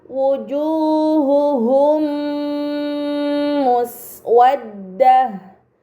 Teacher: Kemudian pada kata wujuhuhum muswaddah terdapat mim sukun bertemu dengan huruf mim, ini dinamakan idgham mimi, maka mim sukun dibaca secara melebur dengan gunnah yang dipanjangkan